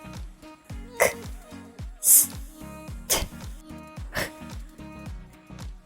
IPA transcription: k s t or h